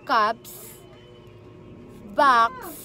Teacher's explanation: So, letter S po, kung papakinggan po ninyo, ay letter S po, yung naririnig po natin sa dulo. At napansin po ninyo na wala pong itong vibration. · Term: voiceless sounds